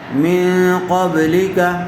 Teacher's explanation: نون ساکن کے بعد حروف اخفا میں سے قاف آیا ہوا ہے، اس لیے غنّے کے ساتھ اخفا کر کے پڑھیں گے. کاف کے اوپر زبر ہے، کاف کو جلدی پڑھیں گے، کھینچیں نہیں.